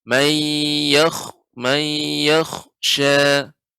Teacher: Kha di sini huruf isti'la, sehingga kita baca dengan tebal.